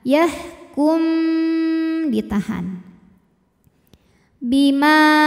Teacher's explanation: lam yahkum nah kemudian Kalau yang ini namanya Ikhfa Syafawi karena mim sukunnya menghadapi huruf ba maka mim didengungkan